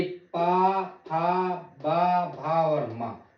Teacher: वह व्यंजन जिनके उच्चारणों में हमारे दोनों ओंठों द्वारा श्वास का अवरोध होता है। सांस का नहीं बोल रहा हूँ, सांस नहीं, श्वास का मतलब सांस जो आती है उसका अवरोध होता है, उसे बोलते ओष्ठ व्यंजन।